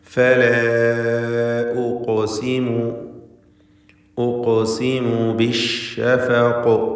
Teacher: വഖഫിൻ്റെ സന്ദർഭമായതുകൊണ്ട് ഖൽഖല കുബ്ര നൽകി ഹറക്കത്ത് പോലെ വ്യക്തമായി സുക്കൂനിനെ ചലിപ്പിച്ച് ഉച്ചരിക്കേണ്ടതാണ്. ഖാഫിന് തഫ്ഖീമും വരും എന്നതും ശ്രദ്ധിക്കുക.